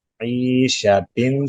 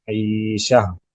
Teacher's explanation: گول تا وقف میں ساکن ہا پڑھا جاتا ہے